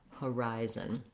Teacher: the rise syllable has a clear vowel it's held longer and the other two syllables are reduced have reduced fouls and are shorter so even though we have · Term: second syllable stress